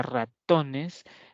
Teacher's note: solo el to de ratones se pronuncia con mayor fuerza de voz